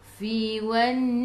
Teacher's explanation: gigi atas menyentuh perut bibir bawah